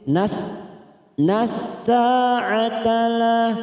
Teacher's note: masuk pada al-samsiyah, fokus pada huruf sin yang bertasdid · Nas-sa'atala, sa fathah diikuti alif 2 harokat